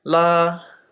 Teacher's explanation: so basically they they taught me that the first time is as if you're singing so it's like a higher tone · the first tone is as if you're singing. So it's like a high tone, like la, like that would be the first tone.